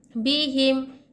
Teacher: मीम को ज़ाहिर करके पढ़ेंगे बिला गुन्ना के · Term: इजहार शफवी